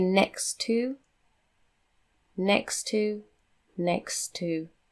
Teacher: you just have to say one t not both